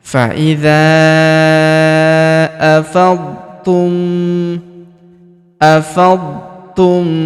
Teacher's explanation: Faidza huruf dza kita panjangkan empat atau lima harakat. Karena di depan huruf dza terdapat alif yang di atasnya terdapat tanda garis bacaan panjang empat atau lima harakat yang ini ya.